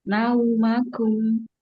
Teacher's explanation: Untuk selanjutnya di harfulin yang di ayat ke-9 yaitu di nau. Ke u ya, nau jangan ke o.